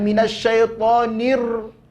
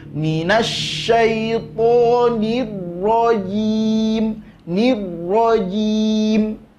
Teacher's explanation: getaran pada huruf ra tak boleh lebih dari sekali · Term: sifat inhiraf